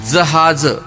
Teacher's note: जहाज यामध्ये ज चा उच्चार करताना जीभ दाताच्या मागे स्पर्श करते, म्हणून हा वर्ण दंत तालव्य आहे